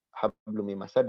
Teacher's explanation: Yakni peleburan yang disertai dengan dengung yang dipanjangkan. · maka melebur dan leburannya disertai guna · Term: idgham bigunah, Idgham Bighunnah